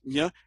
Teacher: Your tongue is, not the tip of your tongue, but somewhere towards the front of your tongue is actually touching that alveolar ridge